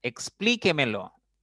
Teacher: La mayor fuerza, la mayor intensidad está en la cuarta sílaba. Por lo tanto, es una palabra sobre esdrújula.